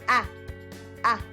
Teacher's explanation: it's something near the front but a little bit to the back but it's very open